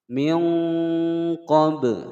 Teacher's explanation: ba sukun dipatulkan. Hukum bacaan qalqalah sughra.